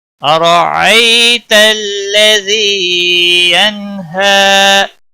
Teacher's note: را کو زبر کی وجہ سے موٹا پڑھیں گے. ای یالین ہے، تھوڑا نرمی کے ساتھ کھینچ کر پڑھیں گے.